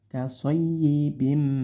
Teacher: Nah, ini ada kasrotain bertemu mim, ini namanya idgham bi gunnah. Dimasukkan di huruf mim disertai dengung. Dengungnya yang lama sekitar 3 harokat atau 1,5 alif.